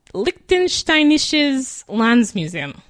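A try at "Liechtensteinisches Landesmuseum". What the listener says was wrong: Maybe Landesmuseum. I don't know if you pronounce all of the syllables.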